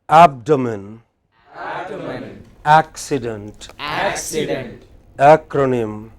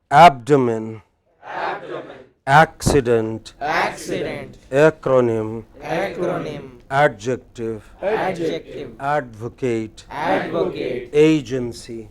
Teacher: all of these words have main stress on the pre pre final syllable